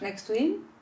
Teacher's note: I'm deleting the first T.